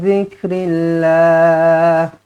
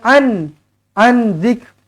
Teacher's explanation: Nun kosong bertemu dengan zal, ikhfa hakiki, dengungkan dua harakat. Jangan an zik, salah.